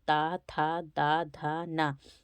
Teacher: ता था दा धा ना तो यह सभी दंत से बोलते हैं